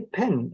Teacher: when you say pen and you say it the Cornish way you will feel like you're cutting off that vowel just a little bit earlier than you're comfortable with because your English speaker's Instinct will want to stretch it out